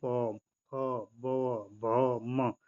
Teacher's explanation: हमारे होंठ जो आपस में क्या हो रहे हैं जी, होंठ आपस में मिल रहे हैं। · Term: ओष्ठ